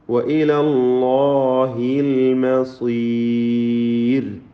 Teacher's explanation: വഇലല്ലാഹിൽ മസീർ അല്ലാഹ് എന്ന ഇസ്മുൽ ജലാലയിൽ തഫ്ഖീമാണ്. പൂർണ്ണമായ അല്ലാഹ് എന്ന ലാമിനും അലിഫിനും തടിപ്പിച്ചുകൊണ്ടുള്ള ശബ്ദം നൽകുക